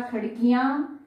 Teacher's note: संभव नहीं है तो सिर्फ हम बिंदु लगा देते हैं, लेकिन उच्चारण जो है वो अनुनासिक ध्वनि के रूप में होता है, यानी कि नाक और मुंह दोनों से होता है